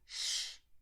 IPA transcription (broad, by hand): ʃ